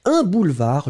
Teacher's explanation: le D final n'est pas prononcé